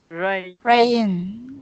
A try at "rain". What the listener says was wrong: Oh, be careful not to break it up into 2 syllables. Don't do that. It's 1 syllable. So don't say rain.